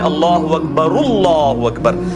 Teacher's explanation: لام کے اوپر کھڑی حرکت ہے جو کہ 1 الف یعنی 2 حرکات کے برابر کھینچی جائے گی. یہ 1 حرکت ہے آدھا الف کے برابر، اور یہ پھر آگے اس کے ساتھ مل رہی ہے.